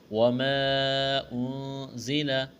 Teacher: وما انزل، مد ہے، کھینچنا ہے، انزل اخفا کریں گے، نون ساکن کے بعد زا ہے، زا میں سیٹی کی آواز پیدا کریں گے